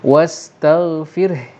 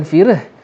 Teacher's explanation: Ha tu mati kan? Jadi kena ada hembusan ha.